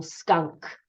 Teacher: in the diagraph um but the difference between it is that both the n and the k still keep their individual sounds but they're just said together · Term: blend